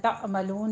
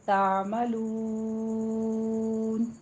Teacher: عین کو وسط حلق میں لے جا کے سٹاپ کیجئے، یہاں پہ جھٹکا نہیں دینا ، تعملون نہیں کہنا، تعملون، عین پر مد عارض وقفی ہو